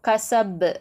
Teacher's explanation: கல்கலா குப்ரா, நல்லா அசைச்சு சொல்லணும். கசப் அப்படின்னு சொல்லிட்டு நல்லா அசைச்சு ஓதணும்.